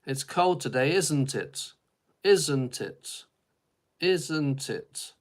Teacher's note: in British English, often the questions don't go up at the end, they go down